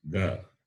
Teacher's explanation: It is Alpa Prana because it involves less amount of expulsion of air.